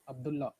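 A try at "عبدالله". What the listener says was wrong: A native will never say Abdullah, it's Abdullah. One L should be removed when you're pronouncing.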